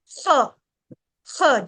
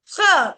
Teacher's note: ख की आवाज गले के अंदर से निकालनी है